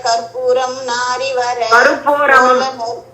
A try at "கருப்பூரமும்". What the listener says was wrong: கற்பூரம் அல்லமா அதுல பாரு ரூதான் இருக்கு. கருப்பூரமும் நாரி.